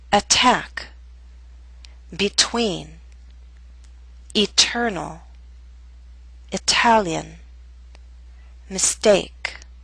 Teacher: we have a true T in the middle of a word at the beginning of a stressed syllable